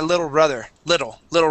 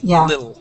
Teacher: we drop out those t's completely